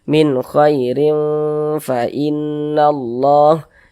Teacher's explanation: Huruf fa termasuk salah satu huruf ikhfa hakiki awsat. Sehingga bunyi tanwinnya dibaca samar. Kemudian didengungkan. Khairin didengungkan, soalnya itu kita tahan, kita panjangkan sejenak.